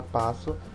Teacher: Então, a palavra passo, nós escrevemos o SS, que são consoantes, mas quando a gente fala, só sai o som de um S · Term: dígrafo